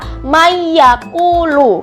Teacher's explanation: Emang tulisannya Nia Desa Man yaquulu tapi karena ini nun sukun nun sukun ini nun sukun bertemu dengan ya jadinya dia dimasukkan ke yak nya jadi Bacanya adalah mayakulu kayak gitu teman-teman Ini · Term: Idgham Bighunnah, idgham bi gunnah